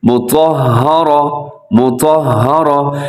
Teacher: حرف جو طا لکھا ہوا ہے اسے آپ نے باریک نہیں ہونے دینا، مطہرہ نہیں پڑھنا بلکہ مطہرہ، مطہرہ۔